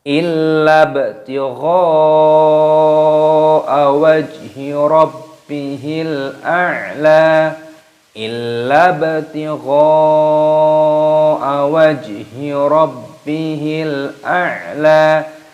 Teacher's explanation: lam alifnya dibaca tasdid, dimasukkan. Illa baknya berharokat sukun, diqalqalah, dipantulkan suaranya.